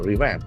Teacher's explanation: Again, there are two syllables. Accent falls on the second syllable.